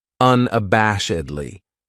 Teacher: This adverb has 5 syllables, and the stress is on that third syllable, that bash